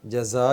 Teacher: زا کو تھوڑا سا سختی کے ساتھ سیٹی کی آواز ہے اس میں